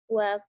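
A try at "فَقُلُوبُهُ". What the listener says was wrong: Fa. Ini telinga saya masih sehat. Kamu bilangnya wa. Fa. Fa. Ya, fakulu. Fakulu.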